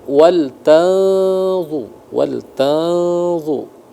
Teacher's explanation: Nun bertemu dengan d ikhfa. Jadi disamarkan dengan tetap ditahan selama dua harakat ya.